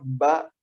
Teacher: Huruf ba, kalau dia syiddah, dia tidak mungkin hams. Huruf ba kalau betul kita sebutkan syiddah kuat, bibir menempel kuat, ba, tidak mungkin keluar nafas.